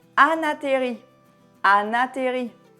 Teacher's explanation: Lorsque tu rapproches ces sons, il n'y a pas d'espace entre ces sons.